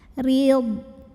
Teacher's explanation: Huruf ra dibunyikan secara tarqiq karena ra berbaris kasrah. Maka bacanya tipis, pangkal lidah datar, jadi suaranya lebih ringan ya.